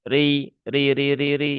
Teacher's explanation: Huruf ro yang berharokat kasroh, maka dia dibaca dengan tarqiq ya atau dengan tipis ri ya.